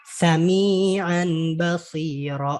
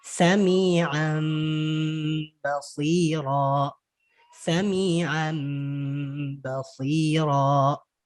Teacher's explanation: Berubah bunyi nun mati atau tanwinnya menjadi mim. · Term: Iqlab